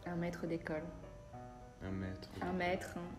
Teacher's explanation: Quand il y a un accent circonflexe, c'est un peu plus long. Mais ça, c'est très suisse par contre. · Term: voyelle longue